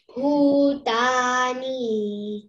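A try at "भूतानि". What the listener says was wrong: Ni, don't elongate. Bhu is Mahaprana. That's the, in the transliterated one, BH is underlined.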